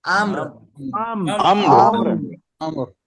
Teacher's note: আমর র একেবারে হালকা উচ্চারণ হবে